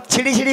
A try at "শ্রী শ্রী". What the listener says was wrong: আরে মাসি ওনার নাম ছিরি ছিরি না, বলো শ্রী শ্রী, বলো শ্রী শ্রী।